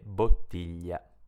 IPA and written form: bottiʎa (bottiglia)